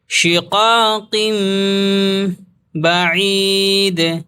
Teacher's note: تنوین کے بعد اگر با آ جائے تو تنوین کی آواز کو میم میں بدل کر پڑھتے ہیں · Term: اقلاب